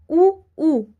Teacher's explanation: होटो से बोला जाता है तो ओष्ठ हो गया